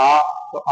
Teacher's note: पीछे से आ रहा है। आ तो यानी लंबी ध्वनि निकल रही है। पीछे से आ रही है।